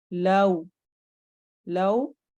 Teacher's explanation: लव में हमारे होंठ गोल होंगे